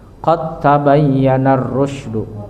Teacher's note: Qad tabayyana rusdu, dal kanato mutaqariban berdekatan, mutajanisan mutaqariban. Qad tabayyana rusdu itu makhrajnya hampir berdekatan, jadi mutaqaribain hampir.